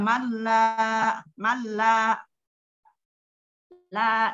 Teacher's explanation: Langsung tidak ditahan, tidak digunakan. Malla, la ada fathah menghadapi alif, bacaan maqobi'i, hukumnya maqobi'i, dibaca dua harokat atau satu ayunan. Jadi satu ayunan saja, malla, malla, la, satu ayunan.